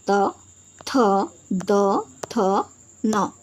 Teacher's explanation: त वर्ग को दंत यानी कि दांतों की सहायता से बोला जाता है